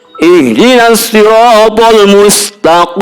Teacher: qaf itu adalah letaknya di pangkal lidah dalam ya, pangkal lidah dan pangkal langit-langit